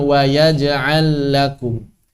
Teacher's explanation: Lam pertama hilang, langsung lam yang kedua ditasydidkan.